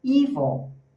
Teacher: Esse dark L não cometa o erro de falar como U. Tá? Ele funciona como se você falasse e ele sobe como se fosse uma roller coaster.